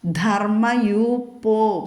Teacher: ധ ഘോഷാക്ഷരം വരണം മൃദുവാക്കരുത്